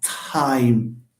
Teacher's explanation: okay the T of time is pronounced with a a here a small H we call this aspiration